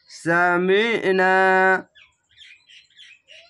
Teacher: সামিনা, জাবারের পাশে খালি আলিফ 1 আলিফ টেনে পড়বেন। আইনটিকে মোটা করে গলা চিপে পড়বেন